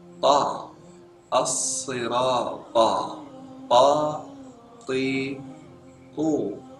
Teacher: Huruf ta makhrajnya adalah lidah menyentuh gusi di atas dua gigi siri bagian atas.